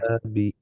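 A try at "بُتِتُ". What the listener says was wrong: টু টা একটু বড় হয়ে গেছে টি এর চেয়ে। বুতি টু।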